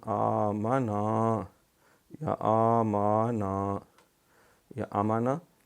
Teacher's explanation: یعنی جو کھڑی زبر ہے اس کو ایک الف جتنا کھینچ کے